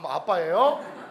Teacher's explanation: 입술에서 나는 소리죠 입술이 붙었다가 팍 하고 터지는 소리